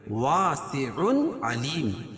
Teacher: تنوین کے بعد حروف حلقی کے 6 حرفوں میں سے عین ہے تو یہاں ظاہر کر کے پڑھیں گے. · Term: اظہار حلقی